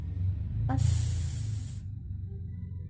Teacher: The place of articulation is alveolar. The manner of articulation is fricative.